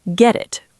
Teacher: In British English, we might keep the T clear